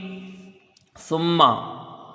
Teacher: میم مشدد ہے، ایک الف کی مقدار غنہ ہوگا